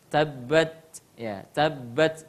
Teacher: Iya, tabbat, ya, tabbat tidak sampai tidak ada sama sekali nafas yang keluar. Ta ada sedikit hams, cuma dia lemah ketekanannya sehingga tidak terlalu banyak.